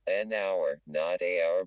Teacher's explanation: an hour not a hour because the H is often silent